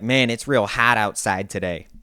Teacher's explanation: most people that I've talked to in this area usually do push that o vowel really forward